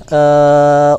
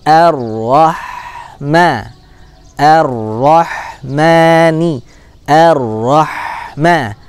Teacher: Huruf ha as-sakinah punya karakter yaitu dia adalah rokhwah, mengalir. Kemudian dia juga punya hams ya.